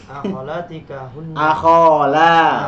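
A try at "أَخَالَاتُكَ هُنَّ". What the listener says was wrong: Akholatika. Nah, kenapa tiba-tiba kasroh enggak ada penyebabnya? Akholatuka hunna ammatuka.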